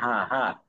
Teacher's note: কারণ এটা গলার মাঝখান থেকে উচ্চারণ হয়। আর পরের হাটা যখন উচ্চারণ করবেন তখন আমরা জানি এই হাটা গলার অগ্রভাগ থেকে উচ্চারণ হয়